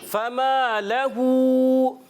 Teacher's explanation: میم الف زر ما ایک الف کھینچیں گے, لہو میں یہاں ہا الٹا پیش ہو, اس کو بھی ایک الف کھینچ کر ادا کریں گے